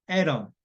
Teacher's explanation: 모음 사이에 T가 있으면 플랩 현상이 납니다. 그래서 리을 발음 나죠. 그렇죠. 보시면 atom 하는 게 A하고 O 사이에 T가 있으니까 atom.